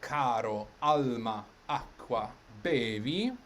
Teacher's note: All of those words have the accent on the next to last syllable. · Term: piano word